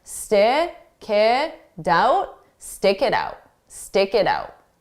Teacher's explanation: So we have it, the T is actually between 2 vowels. So if we connect those sounds together, we'll pronounce the T like a soft D, d. And then on the stick, I'll take that K sound and I'll transfer it to the next sound to help smooth those out.